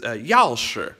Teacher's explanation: the y'all is exaggerated it's a quick drop it's a bit angry it's a fourth tone